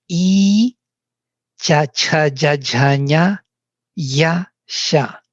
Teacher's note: They are all articulated on the same level of palatals.